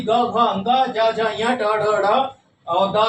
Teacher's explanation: इन तीसरा, चौथा और पांचवा वर्ग जो है, ये क्या है, ये आपका सघोष कह लीजिए या घोष वर्ण कह लीजिए। इनको बोलने में स्वर तंत्रियां झंकृत होती है, इसलिए इनको इस वर्ग में रखा गया है।